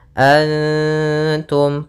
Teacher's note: tanwinnya Antum pada lafal Antum ada nun sukun bertemu dengan Ta Maka ini bacaan Ikhfa cara membacanya adalah samarkan nunnya kepada huruf ta bukan dengan dengung